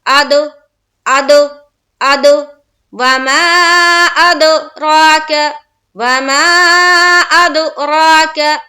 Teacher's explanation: دال سے ملائیں گے تو آواز ٹکرا کر ڈبل ساؤنڈ آئے گی